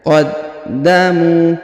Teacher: huruf da berharakat tasdid maka kita tahan dan kita tekan qaddamu huruf mu dipanjangkan dua harakat karena di depannya terdapat wau · Huruf da berharokat tasdid, maka kita tahan dan kita tekan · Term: ditahan dan ditekan